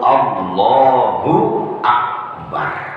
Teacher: Jadi lafaz Allah dan Akbar harus nyambung, nggak boleh terpisah. Karena ketika kita lakukan Allahu ya, Akbarnya langsung nyambung ikut.